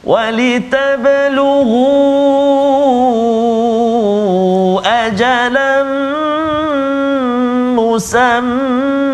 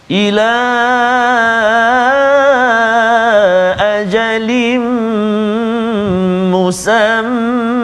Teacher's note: kesemuanya ini adalah kita baca dengan mad iwad dengan kadar dua harakat ketika waqaf